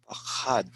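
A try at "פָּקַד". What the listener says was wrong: Well, it sounds like you're saying pachad. Pachad means fear. Pachad is he was afraid, but pakad. This means he visited.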